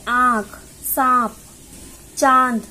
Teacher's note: जब हम कोई शब्द बोलते हैं जिस पर यह चंद्रबिंदु लगी होती है तो उसका उच्चारण मुंह और नाक दोनों की सहायता से होता है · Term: अनुनासिक